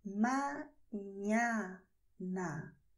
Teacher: veja que não é um som nasal forte como seria em português